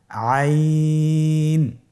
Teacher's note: আইন হরফটি কণ্ঠনালীর মধ্যখান থেকে উচ্চারিত হয়।